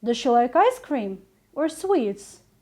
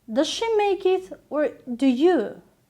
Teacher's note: Each option should have a slight rising intonation with the fall at the end of the question.